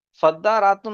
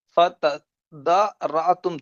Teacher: تو تا کو ساکن کر دیا اور ساکن کر کے اس کو دال سے بدل کر دال کا دال میں ادغام کر دیا گیا